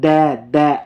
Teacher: में किसका प्रयोग होता है दंत बोलते है ना द द आपकी जीभ जो है जब द बोलोगे ना द तो आपकी जीभ दांतों को टच करती है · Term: दंत्य